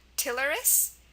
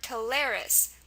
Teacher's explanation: Tilaris, where the stress is on the first part, or Tilaris, where the stress is on the second part